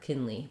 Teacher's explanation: My guess would be that it has first syllable stress, the I vowel, and then the E sound for the part, Kinley.